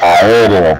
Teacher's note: En el caso de la palabra aéreo, por ejemplo, se están separando allí las vocales abiertas, generando dos hiatos.